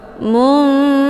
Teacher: Hukum bacaan ikhfa awsat dibacanya sambil didengungkan.